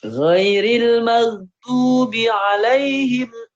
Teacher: Kayaknya tadi kagok bi-nya jadi panjang ya. Bi-nya pendek.